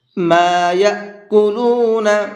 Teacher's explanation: ما یأکلون، یا، یہاں پر یہ حمزہ ساکن ہے اور حمزہ ساکن کو جھٹکے کے ساتھ میں پڑھا جاتا ہے، اس لیے میں نے اس کو جھٹکے کے ساتھ میں پڑھا ہے۔